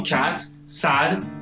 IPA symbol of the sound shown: æ